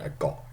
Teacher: got is as good as never without a glottal stop because it's so unstressed